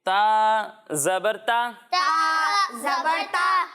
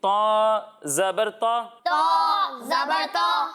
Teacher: ایک حرف ہے تا اور دوسرا حرف ہے طا. जब हम ता की अदायगी करेंगे तो इसे बारीक पढ़ेंगे, और जब हम तौ की अदायगी करेंगे तो इसे मोटा पढ़ेंगे, क्योंकि तौ हरूफ मुस्तालिया में से है।